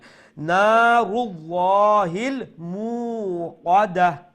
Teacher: মিম পেশ মু লাম্বা করবা এক আলিফ